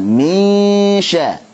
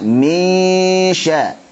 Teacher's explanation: Kenapa nun sukun ketemu shin? Ikhfa hakiki, nun sukun ketemu shin, gunnahnya ikut tipis karena shin tipis.